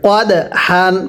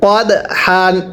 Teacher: হলে ধাক্কা দিয়ে পড়তে হয় এই নিয়মটা সবাই স্মরণ রাখবেন তাহলে দালের উপর সাকিন দালকে ধাক্কা দিয়ে পড়তে হবে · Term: কলকলা